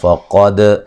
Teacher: فقد قاف کو موٹا ادا کریں گے. دال قلقلہ ہے، اس کو ہلا کے پڑھیں گے